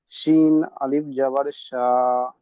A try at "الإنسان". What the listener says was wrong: শিন নয়, সিন, সিন, জিভে লাগা দিয়ে, সিন। সিন আলিফ জাবার সা।